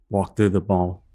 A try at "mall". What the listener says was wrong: through the ball. No, it sounded like you said ball. Like y'all are in England and walk into a big ballroom having a ball in that room. Mike Alpha Lima Lima.